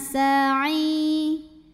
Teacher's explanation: karena ada ya sukun yang didahului baris kasrah, maka ainnya ini kita panjangkan cukup 2 harokat saja. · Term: matabi'i